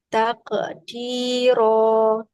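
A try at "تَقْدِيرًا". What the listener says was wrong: jangan putus suaranya enggak boleh takqdir Tapi disambung bunyi qalqalahnya dengan huruf dalnya.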